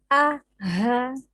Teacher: Hamzah tadi tempatnya ada di pangkal tenggorokan bersama dengan ha, a, ha ya. Tadi ya kalau kita praktekkan seperti agak ke dada karena memang tenggorokan yang paling bawah.